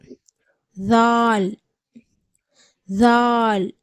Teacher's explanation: நாவினுடைய நுனி வந்து மேல் பற்களுடைய ஓரத்தில் படும்பொழுது மென்மையான முறையில் ஜால் உடைய சப்தம் பிறக்கப்படுகிறது